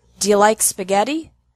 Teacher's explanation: Do you often sounds like do ya?